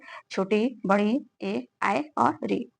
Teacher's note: अग्र स्वर जीभ के अगले भाग की सहायता से हम इनका उच्चारण करते हैं। जैसे छोटी इ, बड़ी ई, ए, आई और ऋ मध्य जीभ के मध्य मध्य भाग से मध्य स्वर जीभ के मध्य भाग की सहायता से इनका उच्चारण करा जाता है वो है अ पश्च स्वर।